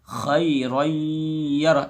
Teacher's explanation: تو یہاں پہ ادغام ناقص ہوگا، خیرا یرہ یعنی آدھا ادغام ہوگا